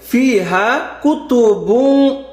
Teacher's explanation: গুন্না মোটা হবে, যেহেতু কফ আছে, কফ থাকলে কি গুন্না মোটা হবে।